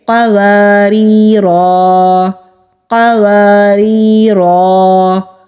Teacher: اگر ہم یہاں پر وقف کریں گے تو پڑھیں گے قواريرا قواريرا. ہم نے آواز کو بھی توڑا، ہم نے سانس کو بھی توڑا اور ہم نے حروف مدہ کو ادا کیا، یعنی کہ خالی الف کو ہم نے پڑھا ہے، ایک الف کے برابر کھینچ کر پڑھا ہے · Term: الف مدہ